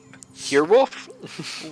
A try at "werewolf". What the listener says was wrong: You totally skip out on the L in wolf. It's just like the unconscious habit where Utahns don't say their T's